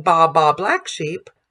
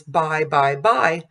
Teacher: And we want to stay on that primary vowel and then right at the end go to the secondary vowel so that the listener knows exactly what the word is. If we don't go to the secondary vowel, I becomes ah, and by becomes ba. And so if we're singing ba ba black sheep versus by by by, we can hear that we have a monophthong and a diphthong.